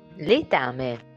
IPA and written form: lɛ'tame (Letame)